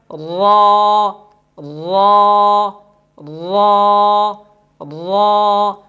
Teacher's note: زبان کی نوک بھی لگ رہی ہے اور زبان کی نوک کے ساتھ جو پشت زبان ہے وہ بھی 4 دانتوں کے مسوڑوں کے ساتھ لگ رہی ہے، جس کی وجہ سے را پر ادا ہو رہی ہے۔